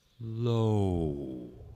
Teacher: Another distinction between these sounds is that the O sound is a diphthong, and that means it slides into a lower register or a lower type of sound. And so you get low, whereas the aw sound doesn't do this.